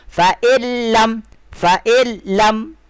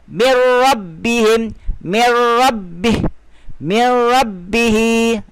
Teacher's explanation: Tapi dia tak kena menggabungkan. Menggabungkan bunyi nun dengan huruf selepas tanpa dengung.